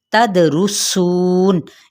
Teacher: दाल पे कलकला, रॉ की पेश को लंबा नहीं करेंगे। सू पे मद्द इसलिए बिल वाओ, नून पे वक्फ किया तो वक्फ बिल इस्कान।